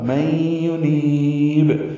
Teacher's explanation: نون کو لمبا کریں گے، نی یا مدہ ہے اور با ساکن پہ قلقلہ ہوگا، میں ینیب، یہ وقفاً قلقلہ ہے۔